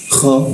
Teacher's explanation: Fil ardi kha di jakun, di atas jakun ada suara ngoroknya.